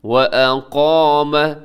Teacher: قاف اس میں موٹا ہے، ساتھ الف بھی موٹا پڑ جائے گا، الف مدہ تھوڑا کھینچیے گا.